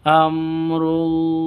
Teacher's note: mim mati bertemu dengan ro jelas terang zhar syafawi